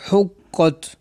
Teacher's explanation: قاف حروف مستعلیہ میں سے ہے اس لیے اس کو پر پڑھیں گے